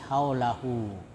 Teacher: Cara membacanya dipanjangkan sampai satu alif saja. Ya. Atau seperti panjang mad thobi'i. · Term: mad silah kasirah